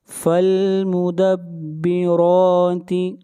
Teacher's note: را کو موٹا پڑھیں گے، را کے اوپر کھڑی زبر ہے اور را کو کھینچ کر پڑھیں گے ایک الف کے برابر